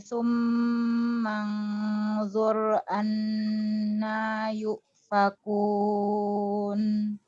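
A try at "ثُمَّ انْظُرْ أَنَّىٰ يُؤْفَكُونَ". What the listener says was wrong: Sunya kurang lembut. Su. Ingat dia rokhawah. Rokhawah hamas. Su. Makhrajnya nggak boleh ditekan, Ustazah. Su, kalau itu ditekan. Jangan ditekan, lembut.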